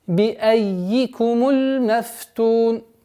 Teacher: Здесь в данном случае сперва удваиваем букву я, а потом кесру.